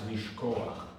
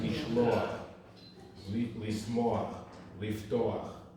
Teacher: it just has an extra ah before the chet.